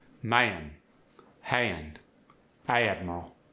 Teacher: The A before the N or the N in words like hand, man, admiral, get the aya glide.